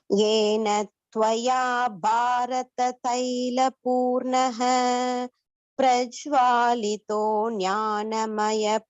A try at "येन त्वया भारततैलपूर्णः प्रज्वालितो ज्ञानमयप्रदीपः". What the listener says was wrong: Bharata, Bha should be stressed, Mahaprana. That yellow colored one, you have to say Ha, from the throat you have to say Ha, and this Prajwalito Jnana, there should be some link between these two words. Prajwalito Jnanamaya Pradeepah.